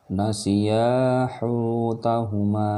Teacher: Ya-nya panjang, hu panjang, ma panjang.